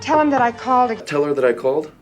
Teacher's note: when we use the word that as a conjunction we almost always reduce it